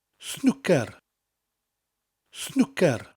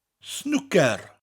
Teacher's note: Snooker in Welsh, similar to the English. It's snooker with a rolling R, and each syllable is said evenly.